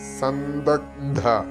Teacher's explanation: സന്ദഗധ അവിടെ ഗ് ചെറുതായിട്ടേ കേൾക്കുള്ളൂ